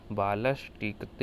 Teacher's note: दंत सा आपका मूर्धन्य शा में बदल जाएगा